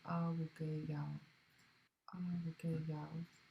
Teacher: High tone, long A